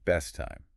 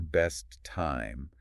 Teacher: But instead of a very clear best time with two separate tape puffs of air, it often blends into best time, just one slightly held T.